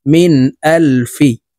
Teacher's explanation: মিম নুন জের মিন, নুন সাকিনের পরে ইজহারের হরফ হামজা আসছে, এই কারণে এই নুন সাকিনকে গুন্নাহ ছাড়া স্পষ্ট করিয়া পড়ব। মিন হামজাহ লাম জবর আল, ফা জের ফি, মিন আল ফি।